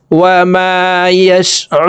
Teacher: রু 3 আলিফ টেনে নুনকে সাকিন করতে হবে কারণ মধ্যে আরজি 3 আলিফ টেনিয়া পড়িতে হয়।